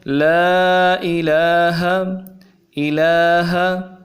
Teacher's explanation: اور اخیر میں جو لفظ پڑھا ہے ہا، نرمی والا ہا ہے، اس کو انتہائی نرمی کے ساتھ پڑھنا چاہیے۔